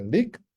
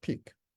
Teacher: The place are different. One is alveolar, one is bilabial, one is voiced, one is voiceless, one is liquid, one is stopped.